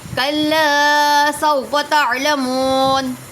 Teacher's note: کلا کو کھینچیں گے، الف مدہ ہو رہا ہے، سوفا کو نہیں کھینچیں گے۔